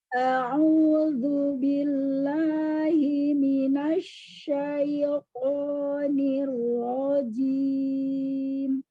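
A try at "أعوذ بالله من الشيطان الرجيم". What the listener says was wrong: Asyaitonir rajim. Jangan tamtid. Tamtid itu memanjangkan bunyi huruf. Terutama ketika ketemu huruf sukun. Asya, asya, ya, nasya, bila, enggak gitu. Nirrohim.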